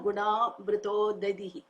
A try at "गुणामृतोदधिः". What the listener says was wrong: गुण अमृत उदधि you cannot stop in the middle in the three words gunamruto dadi The problem is dadi. When you say dadi, of course without visarga it means curds. Dadi means curds. Mritaha meaning with dead. We are talking about amrita here. So amrita udadihi.